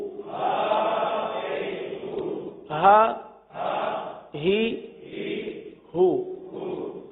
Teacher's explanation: یہ دو چشمی والا ہا ہے جو کہاں سے ادا ہوتا ہے؟ حلق کے سب سے آخر والے حصے سے